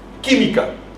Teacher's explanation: Química, no decimos química y mi química. Química, y el sonido está en la antepenúltima sílaba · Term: esdrújula